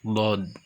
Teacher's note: huruf dod tempat keluarnya huruf dari pangkal tepi lidah. Tepi lidah pangkalnya.